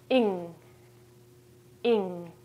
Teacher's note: But if it's n and g together, the sound is different. It's almost like we don't say the g at the end of the word.